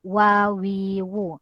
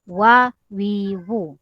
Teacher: berkenaan bibir atas dan bibir bawah, cuma dia tidak berjumpa